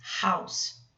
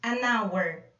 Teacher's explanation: Reparem que a palavra hour, aqui, o H não é pronunciado.